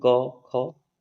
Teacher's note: क, ख में कंपन नहीं हो रहा है